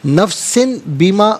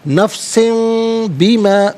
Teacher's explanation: میم کی آواز غننے کے ساتھ ادا کی جائے گی